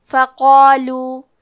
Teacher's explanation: کلمت فقالو میں حرف القاف ہے اور اس کے بعد مد الف ہے، کیونکہ مد الف میں پچھلے والے حرف کا حکم لیتے ہیں تفخیم میں اور ترقیق میں، تو ہمیں قاف کو اور مد الف کو دونوں کو بھاری آواز میں ادا کرنا ہے